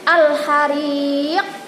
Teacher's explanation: kalau diwakafkan qalqalah kubra bacanya al-hariq. Nah, agak tebal.